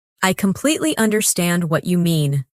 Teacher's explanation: Emphasize completely and understand.